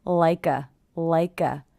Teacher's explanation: i hear the k linking to the schwa